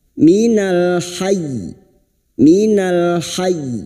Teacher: hanya masuk tanpa ditahan lama-lama dan posisi bibir kita tersenyum sebagai isyarat bunyi pada huruf ya